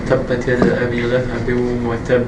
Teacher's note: Here, in the word tab, it's a ba, so we are not making two harakat.